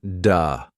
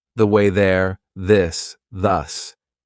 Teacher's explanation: For example, the th sound. Your tongue has to come through your teeth.